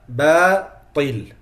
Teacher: The ta is heavy, the ba is not.